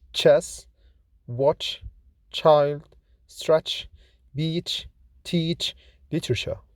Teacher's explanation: Ch is voiceless, fortis, palato-alveolar, affricate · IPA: /tʃ/